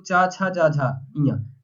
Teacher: तो चा वर्ग का उच्चारण स्थान क्या होता है साथियों, तालु होता है।